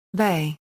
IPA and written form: ˈve (ve)